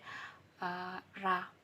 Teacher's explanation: voice palato alveolar approximant sound